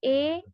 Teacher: अब इमाला इन दोनों के दरमियान है, जो आपको एरो बीच के तरफ दिख रहा है, उन दोनों के दरमियान जो है इमाला, जो लाइट पिंक में है, उसको हम कहेंगे इमाला, यानी कि ए का साउंड, न ही आ है न ही ई है, बल्कि आ और ई के दरमियान के साउंड ए, इसको हम कहते हैं इमाला।